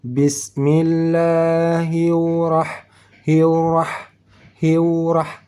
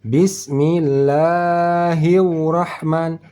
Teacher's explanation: dari ha berbaris kasrah langsung masuk ke dalam huruf huruf ra yang bertasdid tidak pakai wau